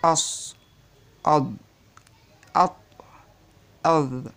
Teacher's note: الاستعلاء حروفه خصة ضغط قذ، ودي حروف بتبقى مستعلية يعني مفخمة، فبيرتفع فيها أقصى اللسان